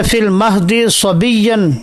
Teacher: تو دال کا صاد میں ادغام ہے، تو یہاں پر بھی اختلاس دوسری وجہ کی شکل میں جائز ہے۔